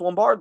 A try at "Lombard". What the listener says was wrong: pisses me off the way you pronounce his name. Lombard. Lombard. It's not Lombard. There's no space in between.